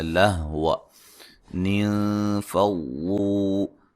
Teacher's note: نون ساکن کا باریک اخفا ہے